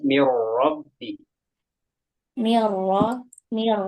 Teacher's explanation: Tanzilum min rabbil alamin. Rabbi, rohnya ditebalkan mirrabbi.